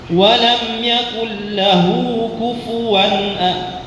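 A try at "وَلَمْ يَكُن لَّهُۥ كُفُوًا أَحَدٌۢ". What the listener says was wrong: لا تقل كفوا، لا كفو. ضم.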